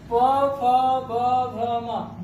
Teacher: दोनों होठ ऊपर नीचे के सट जाते हैं, इसीलिए क्या कहते हैं, इसको ओष्ठ वर्ण कहा जाता है।